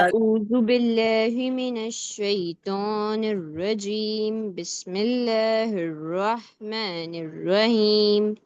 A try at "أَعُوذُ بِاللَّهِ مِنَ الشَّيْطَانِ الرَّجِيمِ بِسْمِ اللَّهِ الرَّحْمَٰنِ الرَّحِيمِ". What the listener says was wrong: بیٹا آپ تھوڑا سا ہے نا بہت آرام سے پڑھا کریے, ایسا لگتا ہے آپ ہر کو منہ کو بہت زیادہ اسٹریس دے کے پڑھتی ہیں, اور سارے لوگوں نے اعوذ پڑھا ہے, آ کو کھینچا ہے.